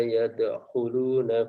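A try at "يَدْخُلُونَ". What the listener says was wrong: Kho-nya kurang. Yadkhulun. Ulangi.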